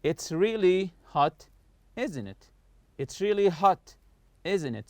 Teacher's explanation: So I'm not raising my voice in the question tag here. I just want you to agree with what I say. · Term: falling intonation